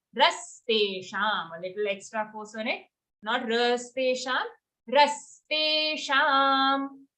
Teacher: After that, ra is also full. Ra has an aghat on it, so we have to say rastesham. A little extra force on it.